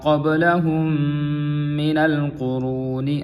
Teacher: میم ساکن کے بعد میم مشدد ہے، یہاں پہ میم ساکن کا ادغام ہوگا میم میں اور مال غنہ بھی کریں گے۔